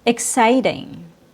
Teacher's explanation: Sigh is stressed. I is not.